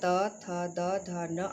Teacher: दंत वर्ग के अंतर्गत त थ द ध न आता है